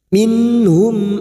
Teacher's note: nun sukun bertemu ha idhar halqi dibaca jelas tanpa mendengung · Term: idhar safawi